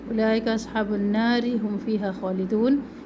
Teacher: نار تھوڑی سی زبان اوپر کی طرف چلی جائے گی. اگر ہم اس کو ملا کے پڑھتے ہیں اولئک اصحاب النار هم فیہا خالدون تو پھر را باریک ہوگی